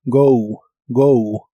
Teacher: La O de esta palabra se pronuncia como OU. Go, go. Y estos son los complementos que vas a usar en el ejercicio.